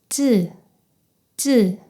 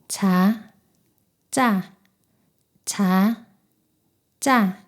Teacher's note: 목구멍에 힘을 주어 성대가 긴장하는 느낌이 있습니다.